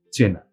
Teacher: হ্রস্বই বা দীর্ঘই ই স্থলে এ হয়ে যায়। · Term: গুণ বৃদ্ধি